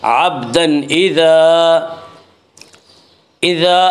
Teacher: تنوین کے بعد حروف حلقی میں سے حمزہ آ رہا ہے اس لیے یہاں پہ اظہار حلقی ہوگا